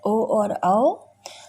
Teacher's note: कंठ ओष्ठ यानी कंठ और ओंठ की मदद से ओ और औ।